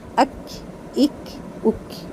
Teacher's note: کاف، کاف کی آواز جب نکالی جائے گی تو اس میں پہلے ہلکی سی ایئر باہر آئے گی، لیکن بہت زیادہ دھیان رکھنا ہے کہ کاف کو ساکن پڑھتے ہوئے اکثر لوگ اس میں جو ایئر نکالتے ہیں نا اس کے ساتھ ہا کی ساؤنڈ لے آتے ہیں، جیسے اکھ، اکھ۔